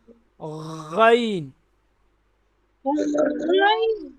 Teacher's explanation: और अब जो हमारे आखिरी अल्फाज हैं, मखरज नंबर 4, अदना हलक, अदना हलक, गैन। जैसे हम गरारा करते हैं ना, ये वहाँ से आवाज़ आती है